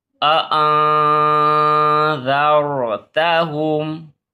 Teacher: یہاں پہ اخفا ہوگا تو یہاں پہ ناک میں آواز چھپا کر پڑھیں گے